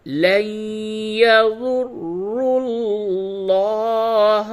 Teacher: نون ساکن کے بعد حروف یرملون میں سے یا آیا ہے، ادغام مع الغنہ ہوگا